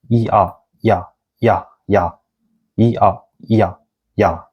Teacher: When you speak 이 and 아 really fast, it became 야